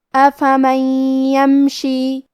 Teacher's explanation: یا حروف الادغام بغنہ میں سے ہے اور ادغام کا معنی ہے حرف کو حرف میں داخل کرنا، تو ہم یہ نون ساکن کو یا میں ملا کے غنہ اور تشدید کے ساتھ یہ حکم کو ادا کریں گے